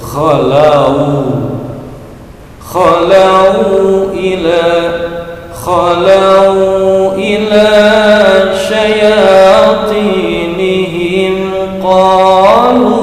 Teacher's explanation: Akan tetapi dikarenakan harokatnya adalah fathah maka menjadi mad layyinun, mad layyin, panjang dan lentur